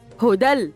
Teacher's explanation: دال منونه بالفتح مضغه في اللام بدون غنه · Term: مدغمة في اللام بدون غنة